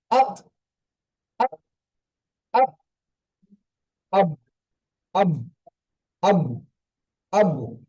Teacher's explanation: আপক mute অবস্থায় বলেন আপক আক আপ ওই জায়গা থেকে ধাক্কা উচ্চারণ হচ্ছে না আক আপ এইভাবেটি দেখেন আব আব আব্বু আব্বু মনে হবে যেন দুবার উচ্চারণ হচ্ছে কিন্তু দুবার হবে না। একবার উচ্চারণ হবে ধাক্কা লেগে উচ্চারণ। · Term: কলকলা